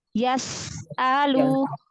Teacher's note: Sin punya sifat hamas, rohwah, lalu sofir ya.